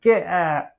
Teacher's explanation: we drop the final T in many words like get out